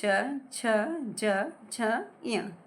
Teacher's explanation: च वर्ग का उच्चारण तालु से होता है